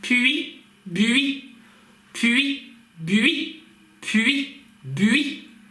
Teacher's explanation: Давайте сначала проговорим с вами сочетание согласных по линейке согласных, соответственно, со звуком «ü» и со звуком «и». Так, чтобы этот «ü» резко переходил в «и», чтобы у нас получалось «п», «ü», «и», «б», «ü», «и». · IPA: ɥ